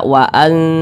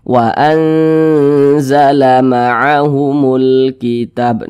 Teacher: Cara membacanya itu dibaca samar kemudian juga berdengung. Berdengung atau digunahkan.